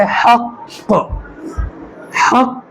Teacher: कलकला कहते हैं इनकी आवाज़ अपने मखरज से टकराकर वापस आएगी